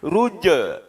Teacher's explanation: Ya, rabbikar ruj'a, ya, ruj'a, jimnya adalah huruf qalqalah dalam keadaan sukun maka harus dipantulkan